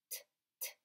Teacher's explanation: Les cordes vocales qui sont dans la gorge ne travaillent pas quand on fait ce son.